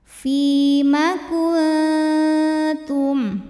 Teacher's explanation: Karena ada nun sukun yang menghadapi huruf ta, maka nun sukun dibunyikan samar-samar, siap-siap menuju makhraj huruf ta disertai bunyi dengung. Jadi ujung lidahnya sudah mau menyentuh pangkal gigi seri atas makhraj dari huruf ta. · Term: ikhfa aqrab